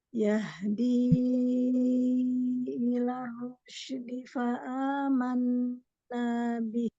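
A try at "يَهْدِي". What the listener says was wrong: Jangan sampai alif. Ke bawah.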